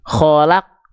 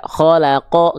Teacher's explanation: Oke, maka ketika huruf qaf dalam kondisi sukun, dia dibaca keadaan dasarnya itu dibaca gini, kholak, gitu ya. Nggak ada lagi vokal o-nya, nggak ada lagi harokat fathahnya, nggak gini, nggak kholako, nggak, tapi kholak, gitu ya.